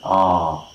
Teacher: back of the tongue at bottom, at the open position we have one, and that is of course the ah sound